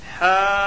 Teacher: حاج میں مد لازم ہوگا، حرف مد کے بعد والے حرف پر تشدید ہے، اس لیے مد لازم ہوگا۔ مد لازم کو 4 الف 5 الف کے برابر کھینچ پر پڑھیں۔